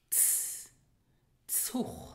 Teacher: we have the letter Z, which has in Luxembourgish the ts sound